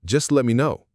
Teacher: The T sound disappears completely. This kind of reduction and blending happens all the time in real conversations.